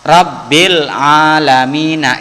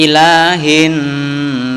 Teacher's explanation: Alif Lam Qomariah dibaca jelas kalau alif lam syamsiah dibaca lebur